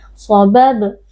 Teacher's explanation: huruf ba sukun berada di tengah-tengah kata, kita baca dengan suara memantul. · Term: huruf qalqalah